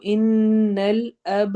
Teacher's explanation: ان میں نون پر ہم نے غنہ کرنا ہے، اب پہ با پہ قلقلہ ہوگا